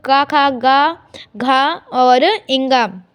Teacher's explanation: ये कंठ का स्पर्श करते हैं, जो हमारा गला होता है ये उसका स्पर्श करते हैं। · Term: क वर्ग